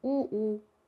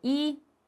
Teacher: 오를 발음할 때는 입술이 둥그러지고 으나 이 이런 걸 발음하게 되면 입술이 어떻게 돼? 평평해지잖아.